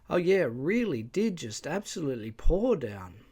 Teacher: one can already hear the speaker gearing up for the tone five rise fall Contour